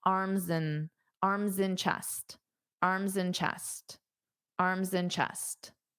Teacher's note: Now this and can just be pronounced as an mm.